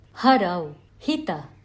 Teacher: It is only an aspirant because it is an expulsion of air, but there is no hissing or restriction of air movement by the mouth, so it is not a sibilant. Ha is accompanied by the vocal cords. Thus, it is a sounded or a saghosha aspirant. · This is similar to hunt in English. It is the sound of air expelled from the throat. Therefore, it is a guttural aspirant. Kanthya. For example, harau, hita.